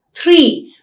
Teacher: the tip of the tongue touches the palate only once, or r would occur between two vowel sounds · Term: tap or a flap